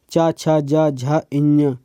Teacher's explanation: ये तालु से बोले जाते हैं, इनको तालब्य वर्ण बोलेंगे।